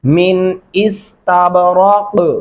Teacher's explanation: कलकला करेंगे, रा को मोटा पढ़ेंगे,